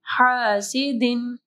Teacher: ہا کو جو ہے نرم پڑھنا ہے گلے کے درمیانی حصے سے